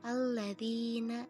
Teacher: huruf Ya Sukun didahului oleh huruf berharakat kasrah dibaca panjang selama dua harokat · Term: makhluk Thobi'i